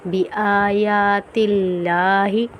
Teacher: لفظ اللہ کے نام کو ہم باریک پڑھیں گے کیونکہ لفظ اللہ کے نام سے پہلے والے حرف کے نیچے زیر ہے۔